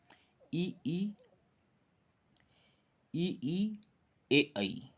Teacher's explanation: अग्रस्वर यानी जीह्वा के आगे का जो भाग है वहाँ से उच्चारित होने वाले ई ए ऐ, ये है अग्रस्वर।